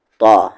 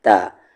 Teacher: طا کو ہیوی کریں گے، یعنی فل ماؤتھ